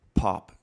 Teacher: If I take the pop filter away and I say pop, you hear that burst of air. So that's what this guy's supposed to stop.